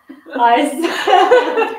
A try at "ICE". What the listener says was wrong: Yeah, they don't pronounce it like ice. They say ICE. Pronounce it the German. Ice.